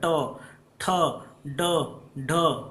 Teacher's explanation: ट में क्या होता है ना जीभ मुड़ जाती है ऐसे मुड़ रही है देखिए ऐसे मुड़ रही होगी जीभ तभी · इसी तरह मूर्धा, ट, ट में क्या होता है ना, जीभ मुड़ जाती है